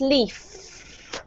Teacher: When you have an F, a F, there's no sound coming out of your throat, so it's leaf.